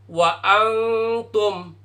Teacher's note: Jadi N-nya samar-samar, enggak jadi N, jadi eng.